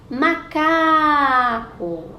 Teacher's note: A sílaba que eu mais demorei para chamar está no meio, é a penúltima, é o K de macaco. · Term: paroxítona